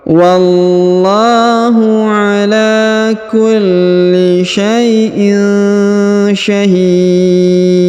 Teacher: Syai'in syahid, huruf hi dipanjangkan boleh 2, boleh 4, boleh 6 harokat karena di depan huruf hi terdapat ya sukun atau ya mati sebelum huruf pemberhentian, dan huruf pemberhentian huruf dun kita sukunkan atau kita matikan sehingga dibaca pantul atau qalqalah